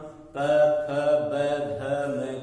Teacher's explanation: अपने औष्ठ जो है दोनों आपस में स्पर्श नहीं कर सकते, तब तक हम प फ ब भ म का उच्चारण नहीं कर सकते।